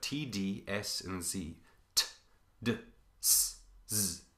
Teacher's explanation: all of these are are tongue against alveolar ridge